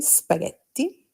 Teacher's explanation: when a word starts with an S, we don't pronounce it with an E before it